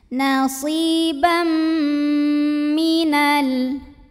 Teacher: bunyi m langsung dan dengungkan, ditahan bunyi m-nya. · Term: idgham bi gunnah